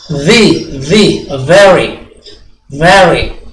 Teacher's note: V ya, baris kiri atas kena bibir bawah